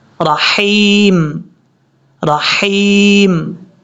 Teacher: را کے بعد جو ہا ہے یہ ہا بریک ہے، اس کو بھاری ساؤنڈ کے ساتھ نہیں پڑھنا